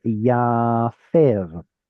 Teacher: it's still a long vowel, but now it switches from an IE vowel to an A vowel because it's in the yiktol. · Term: kamatz